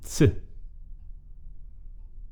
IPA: ʦ